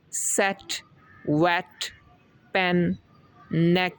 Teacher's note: इसमें हम ई को ज़्यादा लंबा अदा नहीं करते, छोटा सा अदा करते हैं ई करके। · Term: ई वॉवल